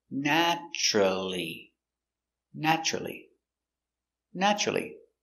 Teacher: naturally three syllables stress on the first syllable